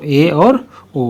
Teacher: अर्ध संवृत में ऐसे अक्षर जिनके उच्चारण में हमारा मुख आधा बंद रहता है उसको अर्ध संवृत कहते हैं। तो इसमें जो अक्षर आते हैं वो ए और ओ आ जाता है, ठीक।